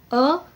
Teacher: अ इसमें हमारी जीभ का जो मध्य भाग है उसका यूज होता है। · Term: मध्य स्वर